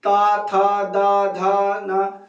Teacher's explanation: दांत प बारबार जीभ जाके मार रही है